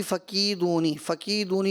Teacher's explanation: فقیدونی یہاں پہ یا مد ہے، اگرچہ آپ نے کیا لیکن بہت کم کیا، کہیں زیادہ ہو جاتا ہے کہیں کم ہو جاتا ہے، بہت جلدی سے پڑھ کر گزر گیا.